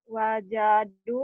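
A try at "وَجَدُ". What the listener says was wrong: jangan kepanjangan. Jangan kepanjangan cuma satu alif ya. Jangan banyak-banyak ya.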